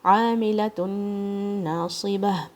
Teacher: عاملۃ ناصبہ، میم کے نیچے کسرہ ہے، لام کے اوپر فتحہ، اور تا مربوطہ پہ ضمتین ہے جو کہ ادغام ہو رہا ہے نون کے ساتھ ود غنہ. عاملۃ ناصبہ، تو یہاں پہ آپ نے اسٹرانگ والی غنہ کرنی ہے، ادغام کے ساتھ یہاں پہ مکس کر دینا ہے آپ نے.